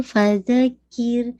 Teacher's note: रॉ को heavy नहीं कीजिएगा क्योंकि काफ पे कसरा है